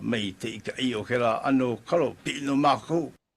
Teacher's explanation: here you can hear alternation between T's and K's.